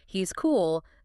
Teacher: the Z is usually clearly voiced because the following K sound in cool doesn't force devoicing in the same way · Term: voiced Z